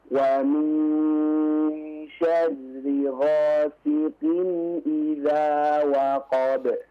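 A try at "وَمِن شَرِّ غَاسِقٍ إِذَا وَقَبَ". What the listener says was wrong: Diulangi ayat yang ketiga, Afwan. Qafnya diperjelas ya. Siqin.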